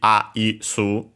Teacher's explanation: Just like in English, only with the additional U at the end. accent on the first mora, first syllable even, you could say, doesn't change in this case. So high and everything else low.